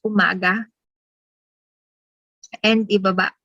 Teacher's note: the lower vowel sound ah is stressed by the speakers